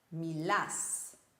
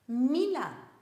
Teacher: The end syllable gets the stress. Speak. Mila. The end syllable doesn't get the stress anymore. The stress goes to the second last syllable.